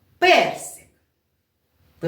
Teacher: на картиночки персик Так ви чули я його сказала перси к ви почули що я якось посилила свій голос і зробила якісь акцент на перший склад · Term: наголосу